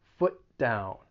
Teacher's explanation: into that d sound in down foot down foot down and your tongue is really just coming up to the top part of your mouth one time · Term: co-articulation